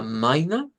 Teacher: con la misma terminación esta sonaría a maina en es caso no sonaría la r sino que sonaría una a media centralizada